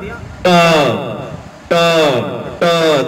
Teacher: जीभ के आगे वाला भाग ऊपर वाले मसूड़ों को टकराएगा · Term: ट वर्ग